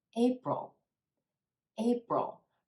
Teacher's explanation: two syllables in this word with emphasis on the first syllable